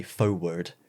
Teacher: you say foe word like there's no r in it